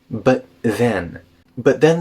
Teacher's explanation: the T in but connects to the the in then you can also do a glottal stop before the the sound